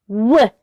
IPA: w